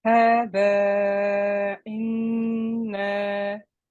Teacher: It means that after we do the mud, after we say hadha, when we complete the 4 or 5 counts, our sound stops and then restarts for the hamza to give it that sharpness.